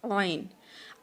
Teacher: आइन की आवाज़ जो है वो वस्ताए हल्क से ही अदा होती है